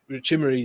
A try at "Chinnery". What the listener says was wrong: Chinnery with an N.